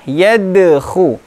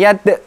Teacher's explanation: Selanjutnya adalah qalqalah, yadkhu, bukan yad.